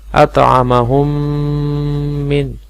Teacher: اطعمہم من، یہاں پہ میم ساکن، میم ساکن کا یہاں پہ قاعدہ ہے کہ میم ساکن کے بعد اگر میم آ جائے تو ہم میم کا میم میں ادغام کر کے گننے کے ساتھ پڑھتے ہیں، تو گویا کہ یہاں پہ گننا بھی ہوگا، ادغام بھی ہوگا۔